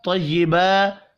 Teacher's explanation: طا کو پر پڑھیں گے, کھڑی زبر کو ایک الف کے برابر کھینچ کر پڑھنا ہے